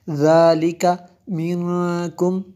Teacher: نون ساکن کے بعد کاف ہے حروف اخفا میں سے، یہاں پہ اخفا ہوگا اس لیے ہم نے غنہ کیا